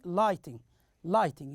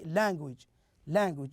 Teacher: So we have like this for the first syllable, like here the word lighting, we can make the stress on the first syllable, so we can say lighting, lighting. You notice that we make a stress on the first syllable.